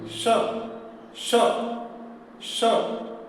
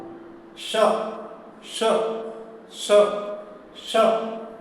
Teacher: जीभ का अग्रभाग थोड़ा मुड़ता है और ऊपर स्पर्श करता है ऊपर छत को, वही मूर्धा है। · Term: मूर्धन्य स्व